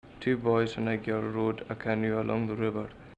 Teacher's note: unstressed vowels in Gaelic are often not reduced to schwa, and in Hebrides English, a lot of times you'll hear that as well.